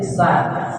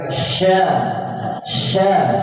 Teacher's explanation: kalau sin itu ee lidahnya kita taruh di gigi bawah ya. bawahnya sa itu sa kalau ini yang ee tengah lidahnya diangkat ke langit-langit